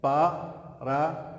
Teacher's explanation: Aqui eu tenho a vogal plenamente realizada, como vogal plena, e eu tenho o U como semivogal, eu tenho o I como semivogal. Então, vogal com semivogais em uma sílaba só, aqui eu tenho então um tritongo, é outro tipo de encontro vocálico.